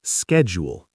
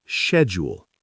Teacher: Americans pronounce the S-C-H like S-K.